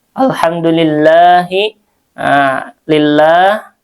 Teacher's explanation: lafzul jalalah dibaca tarkik tipis